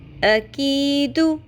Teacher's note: قوف کو نیا پر اور موٹا کر کے ادا کرنے کی کوشش میں ہم کاف کو بھی پر کر دیتے ہیں۔ کاف باریک ہے